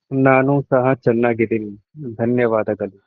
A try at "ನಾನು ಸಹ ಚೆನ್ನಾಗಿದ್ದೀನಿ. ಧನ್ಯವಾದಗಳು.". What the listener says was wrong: Very good. Very good pronunciation.